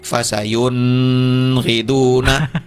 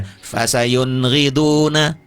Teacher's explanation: Fasayun, nun mati bertemu dengan ghain, huruf izhar, tidak gunnah. Tidak ada gunnahnya izhar.